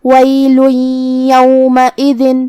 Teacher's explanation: یا حروف الادغام بغنہ میں سے ہے اور ادغام کا معنی ہے حرف کو حرف میں داخل کرنا، تو ہم یہ تنوین کو یا میں ملا کے غنہ اور تشدید کے ساتھ یہ حکم کو ادا کریں گے